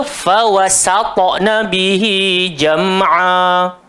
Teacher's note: Dia pergi gemukkan sin. Sebenarnya yang gemuk cuma ta saja. Sin tu tetap nipis sampai bila-bila. Jadi bunyi dia fawasatna bihi jam'a.